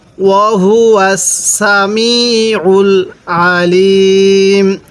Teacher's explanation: যদি আইনটা উচ্চারণের সময় আমরা গলার মধ্যে একটু চাপ দিয়ে পড়ি তাহলে আইনটা সহি উচ্চারণ হবে।